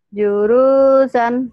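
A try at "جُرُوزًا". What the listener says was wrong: Salah. Salah. Salah. Jurusan. Zainya jimnya keras. Juruzan gitu dong. Jurusan.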